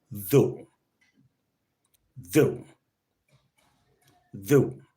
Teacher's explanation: the voiced dental fricative